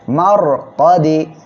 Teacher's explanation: র সাকিন তার ডাইনে জবর বা পেশে হলে র অক্ষরটা মোটা করে পড়তে হবে